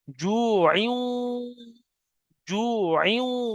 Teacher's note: তানবিনের পরে ওয়াও এসছে ইদগামে নাকিস, একালি পরিমাণ গুণনা করতে হবে তখন। জু আইউ, জু আইউ, আইন দু জের আর ওয়াও এর সাথে মিলবে।